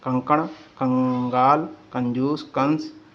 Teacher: यह स्वर के बाद आने वाला व्यंजन है जिसकी ध्वनि नाक से निकलती है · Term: अनुस्वर